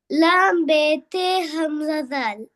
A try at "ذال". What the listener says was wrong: ذال கொஞ்சம் லைட்டா மாறுது. ذال. ذال. தால் சவுண்டுக்கு மாறுது, அதான் நான் தால் சொன்னேன். தால் சவுண்ட் சரியா எடுத்துக்கொண்டா சரி.